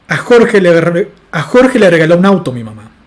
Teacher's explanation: la entonación con la que estoy realizando el nominal mi mamá es muy baja comparada con la entonación con la que realizo el constituyente un auto